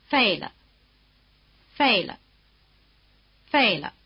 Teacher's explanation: After the falling tone, the pitch of the neutral tone is at the bottom. It really takes the place of the tip of the tail of the falling tone.